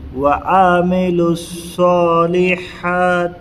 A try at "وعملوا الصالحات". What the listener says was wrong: صحیح نہیں ہوا، آ نہیں ہوتا، یہ عین زبر آ ہے بس، اس کو کھینچنا نہیں ہے، رتی برابر بھی نہیں کھینچنا ہے۔ الا الذین آمنوا وعملوا